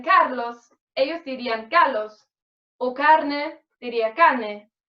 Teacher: una asimilación de la R, B y S a la consonante siguiente